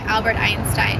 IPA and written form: ˈælbərt ˈaɪnstaɪn (Albert Einstein)